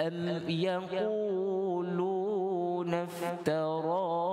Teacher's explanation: dibaca am dengan izhar. Kita tak dengungkan. Am kalimah yaqulun kita baca fathah ya dengan membukanya ya, dengan baca ya.